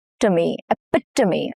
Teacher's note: Here the stress falls on the second syllable, which is pit. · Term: stress syllable